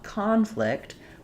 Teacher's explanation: So now we're using this word as a verb, and we're going to have second syllable stress.